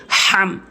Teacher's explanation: মাঝখান থেকে যদি আপনি হাম বলেন তাহলে অর্থ পরিবর্তন হয়ে যাবে বলতে হবে হলকের মাঝখান থেকে হাম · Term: বড় হা